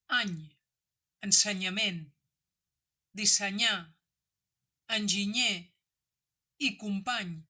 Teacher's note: fent servir el so de la consonant nasal palatal per pronunciar el dígraf 'ny'